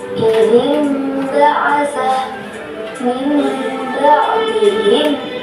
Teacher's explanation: Dibaca iqlab apabila ada nun mati atau tanwin bertemu dengan huruf ba. Cara membacanya atau tanwin diganti dengan suara mim. Contoh: idim ba'asa, min ba'dihim.